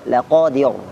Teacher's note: huruf terakhirnya ro, di sini dibaca tipis